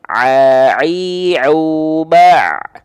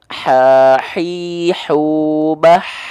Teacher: Kalau ain pakai nafas, jadinya hak kecil.